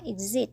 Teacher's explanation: เพราะว่ามันมาอยู่ระหว่างสระ2ตัวนะคะคือตัวEกับตัวIนะคะมันก็เลยจากเสียงSก็เลยเป็นเสียงZนะคะ